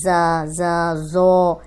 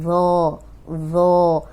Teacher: موٹا پڑھنا ہے، نرم پڑھنا ہے، سیٹی کی آواز نہیں آئے گی